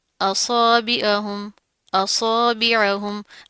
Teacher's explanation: عین کی آواز کو مطلب کہ ظاہر کیا، حمزہ کی آواز سے مکس نہیں کرنا آپ نے اس کو